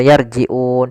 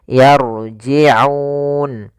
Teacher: jangan dibaca yarji'un dengan hamzah, tapi dia ain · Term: huruf ain